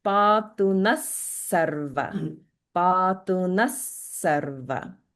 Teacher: we pronounce that visarga like nas. We pronounce it the same as the S sound following. So it becomes patunasarva, patunasarva.